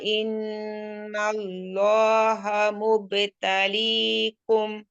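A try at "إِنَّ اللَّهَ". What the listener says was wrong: হাটা হ হয়ে গেছে। ইন্নাল্লাহা, হ্যাঁ মাথা তো যাচ্ছে না, হ্যাঁ হচ্ছে, হ্যাঁ খেয়াল করেন হা হাওয়া হা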